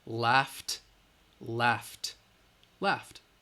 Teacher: That GH has the F sound, again, which is voiceless.